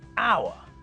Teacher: different to what the basic rule suggests words like our because we don't pronounce the H so it's the same as if we started the word with a vowel